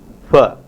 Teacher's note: a voiceless bilabial fricative fa